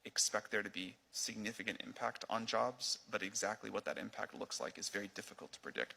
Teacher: He's talking in a dull, monotone fashion.